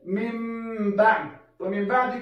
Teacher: بدلو به نون ساکن په میم باندې دوهم به دا خیال ساتو چې په وخت د اقلاب کې به دوه حرکت غنه کوو